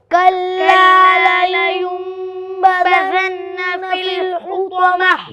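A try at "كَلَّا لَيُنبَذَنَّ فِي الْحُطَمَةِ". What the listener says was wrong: गुन्ना नहीं किया अब आपने, कहाँ पर गुन्ना है? तो किस हर पर गुन्ना है? आप हर बताइए। नून पर, तो गुन्ना करो वहाँ पर। लयुंबदन्न। और गुन्ना। कल्ला लयुंबदन्न फिल हुतमह।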